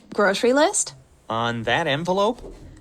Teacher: the intonation of the word list goes up it's a yes no question